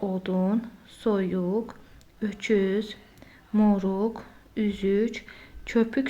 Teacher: odun, soyuq, öküz, moruq, üzük, köpük sözlərindəki saitlər dodaqlanandır. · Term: dodaqlanan sait, dodaqlanan sahitlər